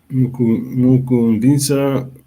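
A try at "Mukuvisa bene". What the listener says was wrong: You drop the nasal as long as nasal to me. Just drop the nasal. Mukuvisa bene, yes.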